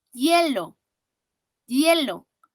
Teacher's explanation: Hielo, aquí no tiene un sonido vocálico.